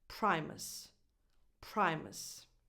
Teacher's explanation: That U is not defined, it's just a schwa. So you go from the M to the S directly, and that little extra sound will just come out naturally.